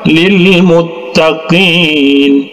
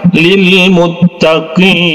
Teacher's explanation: Karena huruf ya dengan huruf nun ini kita sukunkan, ya, muttaqin, ya. Cara membacanya boleh 2 harokat, 4 harokat, ataupun 6 harokat, ya. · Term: mad arid li sukun